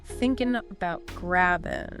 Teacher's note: Dropping the G on thinking and grabbing is common, and about often gets shortened to bout. Thinking about grabbing.